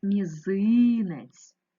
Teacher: звук вимовляється м'яко м останній звук вимовляється м'яко ть наголос мізинець ненаголошений е наближається у вимові до и